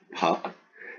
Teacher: no aspirate on the pu there